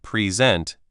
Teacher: in the word present, if you stress the first part present, it's a gift.